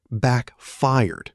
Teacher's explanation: Notice the stress. Backfired with the second syllable stronger, almost like the word fire itself